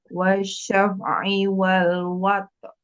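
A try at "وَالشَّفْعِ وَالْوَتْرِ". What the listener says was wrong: Mana R-nya?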